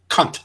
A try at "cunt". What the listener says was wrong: No, it's one. Cunt. No, cunt. There's no A at the end. It just rolls into one. It's not cunt. It's cunt.